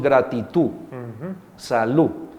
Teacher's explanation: que se pierde el sonido de al final de la palabra